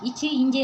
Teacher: நாவின் இடைப்பகுதி நடு அண்ணத்தோட இடைப்பகுதியை பொருந்துறதுனால பிறக்குது